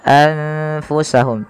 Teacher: Tidak lagi dengan jelas suara nunnya anfusahum, tapi samarkan ke huruf fa. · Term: ikhfa